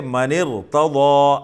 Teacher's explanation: دوسری صورت یہ ہے کہ را ساکن الگ کلمے میں ہو اور زیر الگ کلمے ہو۔ را ساکن سے پہلے زیر ہو لیکن وہ زیر الگ کلمے میں ہو، الگ لفظ میں ہو، اور جو را ساکن ہے وہ الگ کلمے میں ہو، تو تب بھی را کو ہم موٹا پڑھیں گے